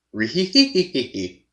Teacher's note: it's from a low pitch to a high pitch back down to a low pitch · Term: Scooby's laugh